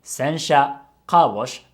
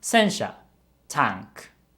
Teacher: they just have different pitch patterns sensha is low high high and sencha is high low low